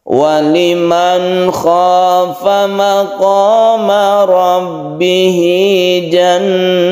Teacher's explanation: Waliman khafa, nun bertemu dengan kha, izhar halqi, karena kha itu termasuk huruf halqi atau huruf tenggorokan, tidak berdengung dan harus jelas. Maqama rabbihi, hinya ini adalah mad silah qasirah karena diapit oleh dua huruf hidup.